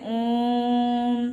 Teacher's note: प्लुत में 3 गुना, उसकी मात्रा को उच्चारित करने में 3 गुना समय लगता है। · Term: प्लुत स्वर